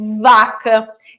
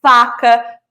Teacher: consoantes que o meu movimento da boca são os mesmos, mas um eu tenho o papel das cordas vocais, outro eu não tenho.